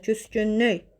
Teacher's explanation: Vurğu son hecanın üzərindədir